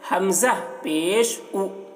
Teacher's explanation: پیش کو بھی معروف پڑھنا ہے، مجہول آواز سے بچنا ہے اور کھینچنا نہیں ہے